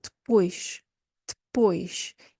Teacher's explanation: You're only going to hear pois. There's a d sound at the beginning. That E is not pronounced, and you just hear pois.